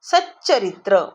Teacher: त च्या पुढे जर च आला तर उच्चार कशामध्ये जातो च मध्ये